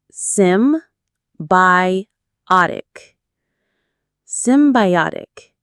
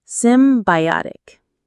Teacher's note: The stress is on the third syllable.